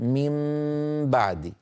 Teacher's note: حكم القلب يكون باطباق الشفتين من غير كز الكز هو الضغط الزائد يعني نقول من بعدي هكذا عادي كما